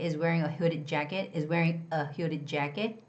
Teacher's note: you don't actually get to hear the word a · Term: schwa